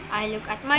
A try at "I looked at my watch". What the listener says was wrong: itu ada at-nya didorong. I looked at aja. D-nya dorong sini. I looked at.